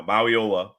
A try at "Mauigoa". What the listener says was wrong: You didn't pronounce the G, bro. It's a G there.